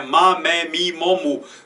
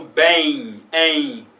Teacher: no final, eu não junto os lábios para pronunciar um M classicamente